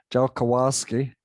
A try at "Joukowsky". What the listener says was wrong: It's pronounced Joukowsky. Joukowsky. There's no J in a Russian, so it's a V sound. Joukowsky.